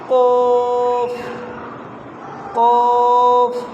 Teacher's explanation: زبان کا آخری حصہ اوپر کی طرف ملانا ہے تو قاف ادا ہوگا۔ قوف کاف لام، زبان کو اوپر دانتوں کے ساتھ ملانا ہے۔